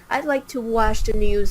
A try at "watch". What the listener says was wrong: It's watch, not wash. I'd like to watch news.